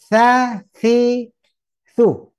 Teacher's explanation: Jadi ujung lidah ke ujung gigi.